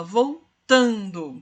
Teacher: é uma paroxítona e tem como sílaba tônica a penúltima sílaba